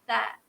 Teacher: Tha keluarkan lidah sikit, sebut tha.